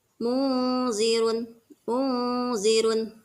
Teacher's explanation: nun sukun ke depannya bertemu dengan huruf Za dibacanya samar tidak terlihat Nun sukunnya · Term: ikhfa